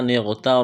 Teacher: لام میں سختی کریں گے، دبائیں گے، نون کو غین کے ساتھ ملانا ہے، غین کو موٹا کرنا ہے۔